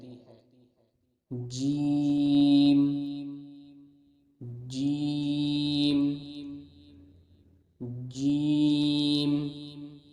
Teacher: جیم کے مخرج کی ادائیگی زبان کے درمیان اور اوپر کے تالو کے درمیان سے ہوتی ہے